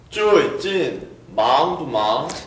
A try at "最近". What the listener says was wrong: 좋은데요. 쭈에이 할 때 쭈에이 하는 발음이 안 났어요. 쭈에이진.